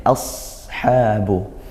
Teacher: ashabu sad sukun tebal ya, ashabu itu sin, kemudian tinggal tebalkan, naikkan pangkal lidahnya